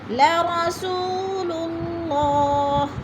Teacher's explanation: سو کو تو ہم نے تھوڑا سا کھینچنا ہے، لمبا کرنا ہے، یعنی وہ مدہ۔